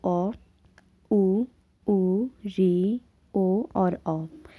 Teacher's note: पश्च स्वर की बात करें तो अ, ऊ, री, ओ और औ, ये हमारे जीभ के पिछले हिस्से से निकलते हैं